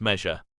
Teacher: voiced palatal alveolar sibilant